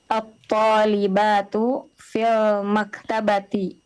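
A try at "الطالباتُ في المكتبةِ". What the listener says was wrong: Atto. Hamzah kita baca dengan tipis. Atto. Tidak o tapi a. At-talibatu.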